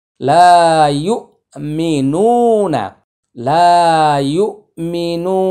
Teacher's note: নুনটা হচ্ছে একালিফ টান, আর নাটা হচ্ছে তাড়াতাড়ি।